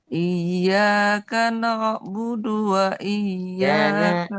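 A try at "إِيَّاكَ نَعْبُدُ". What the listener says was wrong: Na tipis, na'budu. Huruf na tipis, ain tipis. Jadi tidak perlu na'bud, enggak. Iyyaka na'budu wa iyyaka nasta'in.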